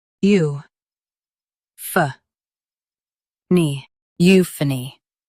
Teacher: Stress you and keep pha light. The nee is quick.